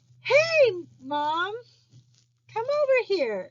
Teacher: like us okay so that's that varying of pitch and um declarative speech which means that the pitch rises then falls